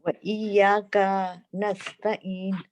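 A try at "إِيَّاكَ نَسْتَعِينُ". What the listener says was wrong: काफी लंबा हो गया। इय्याका नस्तईन। हाँ जी, का और नून को आप जोड़ दें।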